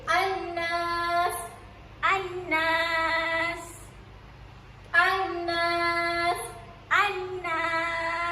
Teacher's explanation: Jadi kita baca lam ni masukkan dalam nun. Jadi an-nas. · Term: alif lam syamsiah